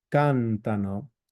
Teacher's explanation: it's not accented in the most common um accent place for Italian which is the um the penultimate syllable. Instead it's the antipenultimate syllable.